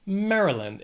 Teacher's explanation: This state has 3 syllables. The stress is on that first syllable.